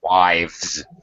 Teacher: The F sound at the end of nouns becomes a V sound, becomes a V.